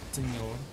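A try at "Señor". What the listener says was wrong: I can tell you don't speak Spanish because you didn't roll the R.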